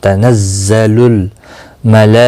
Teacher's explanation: مد متصل ہے، 4 الف کے برابر کھینچ کر پڑھیں گے